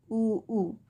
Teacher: જ્યારે આપણે ઉ અને ઉનો ઉચ્ચારણ કરીએ છીએ ત્યારે હોઠનો ઉપયોગ થાય છે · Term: ઓષ્ઠ્ય